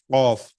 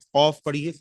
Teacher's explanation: زبان کی جو جڑ ہوتی ہے، اس سے قاف نکلتا ہے